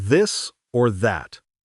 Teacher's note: You'll notice a slight buzzing sound because of your vocal cords.